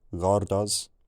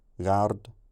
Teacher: The blue culture weakens that last vowel, gordo. The red culture changes that first vowel so it has a front tongue position instead of a back one, gard. And you can see that at some point here, the r has become velarized as well.